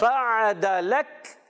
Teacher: یہ کاف آخر میں باریک رہے گا اور ساکن ہو جائے گا